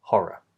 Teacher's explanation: We just say one quick R consonant, horror. And then finally, look at the O spelling, and this will kind of link us into the other word we're exploring today in its difference with that word.